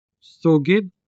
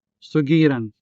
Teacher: When conjugated to form the passive sugiran, which means to be told, the consonant da from sugid shifts into the consonant ra in sugiran